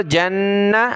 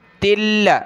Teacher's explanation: تا کو آگے لام کے ساتھ ملایا